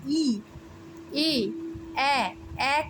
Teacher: তোমরা নিজেরাই দেখতে পাবে প্রসারিত হচ্ছে ঠোঁটটা